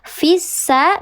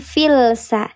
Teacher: Namanya lam syamsiyah, atau disebut juga idgham syamsi. Dibacanya dia dileburkan langsung ke huruf sin yang bertasydid. Fissa bukan filsa.